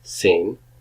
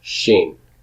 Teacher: that's not an S sound but an SH sound